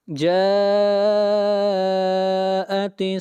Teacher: جاء مد متصل، اس مد کو 3 الف کے برابر کھینچ کر پڑھتے ہیں